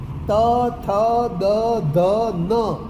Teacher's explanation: તમારી જીભ તમારા દાંતને અડે છે અને પછી આ ધ્વનિ ઉચ્ચારાય છે એટલે એને દંત્ય વ્યંજન કહે છે